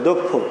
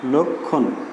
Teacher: তো আমরা গত ক্লাসে জেনেছিলাম যে এই যে ক্ষীয়র উচ্চারণ জেনেছিলাম এভাবে, যদি শব্দের প্রথমে থাকে তাহলে উচ্চারণ হবে ক্ষয়ের মতো, আর শব্দের মাঝে অথবা শব্দের শেষে যদি থাকে তাহলে উচ্চারণ হবে কয় ক্ষয়ের মতো